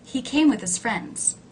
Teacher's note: In the sentence, he came with his friends. The word with, a preposition, low in pitch, unstressed.